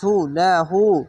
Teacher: উল্টা পেশে এক আলিফ টেনে পড়বেন